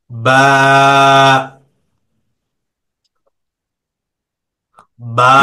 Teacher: দুই ঠোঁটের ভিজে জায়গা হইতে বা উচ্চারিত হয়। দুই জি ঠোঁটের ভিজে জায়গা হইতে উচ্চারিত হয় বা।